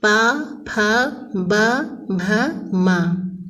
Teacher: प वर्ग के अंतर्गत प, फ, ब, भ, म और इनका उच्चारण स्थान ओष्ठ है